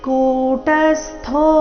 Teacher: ತೃಪ್ತಾತ್ಮ ತೃಪ್ತಾತ್ಮ ಕೂಟಸ್ತೋ ಇಲ್ಲಿ ಕು ದೀರ್ಘ ಟ ಮೇಲೆ ಆಘಾತ ಅರ್ಧ ಸೂರ್ತಿ ಥೋ ಮಹಾಪ್ರಾಣ ದೀರ್ಘ ಇದೆ